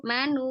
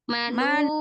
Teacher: Nu, mad tabi'inya jangan masuk hidung. Jangan jangan masuk hidung.